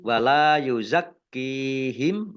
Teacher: yuzakkiihim lam fathah Alif juga Mad Thobi'i dibaca panjang dua harakat kafnya dibaca dobel ada tasdidnya